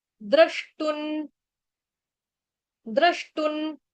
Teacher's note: टू के ऊपर जो बिंदी है अनुस्वार है उसका उच्चारण आधा न, क्यों, क्योंकि आगे द शुरू हो रहा है